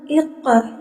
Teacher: Karena ia sejajar di atas atau berharakat fathah sehingga cara bacanya tebal, seakan-akan memenuhi rongga mulut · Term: tafhim